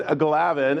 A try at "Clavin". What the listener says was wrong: Clavin, with a C. With a C, my friend.